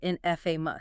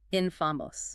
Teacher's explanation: the correct British pronunciation stresses the first syllable.